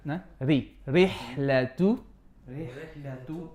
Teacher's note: when we come to Ra with a kasra, it's going to be flat for the most part. So, Ra, kasra will be Ri.